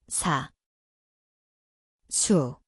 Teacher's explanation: See kõlab nagu s, koht on igemed, sibilatsioon.